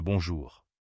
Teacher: Le on n'est pas un simple O, il passe par le nez. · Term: sons nasaux